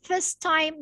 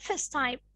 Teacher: end letter of first is T and the first letter of time is T. Together, you just connect them together and pronounce them as if they are one word.